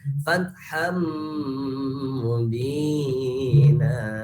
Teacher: Mim ini termasuk kepada idgham bigunah. Otomatis membacanya harus dengan idgham dan ditambah dengan dengung.